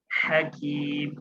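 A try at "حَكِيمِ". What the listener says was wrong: हकीम नहीं, हकीम बीच वाले हलफ से निकालिए यहाँ से।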